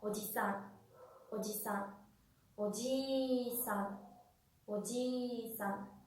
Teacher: no existe ningún tipo de alargamiento. De hecho, es como si existiera una sílaba tónica al final de la palabra.